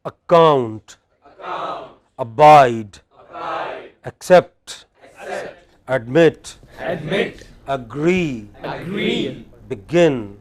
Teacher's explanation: Let us look at some words which have a stress on the final syllable.